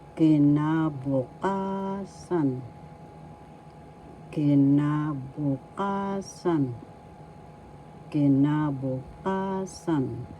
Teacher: First syllable ki, second syllable na, third syllable bu, fourth syllable ka, fifth syllable san. So the accent is in the fourth syllable